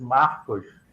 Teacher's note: almost like an H, but it's very guttural, more like a French R, I would say.